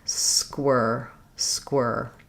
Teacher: Basically, is not a gliding sound. There's no ear, ire, We're just doing one sound, static position, tongue is back and tight.